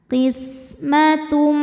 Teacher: Sin berdesis ya, sofir seperti suara ular.